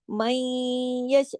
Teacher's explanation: من، یعنی کہ آدھا نقص کے ساتھ ہوتا ہے نا، آدھا ہوتا ہے آدھا نہیں ہوتا. اندر نون کی آواز سنائی بھی دیتی ہے اور پوری من بھی نہیں ہے، اور من ایسے ہو جاتا ہے، اس کو ادغام ناقص کہتے ہیں.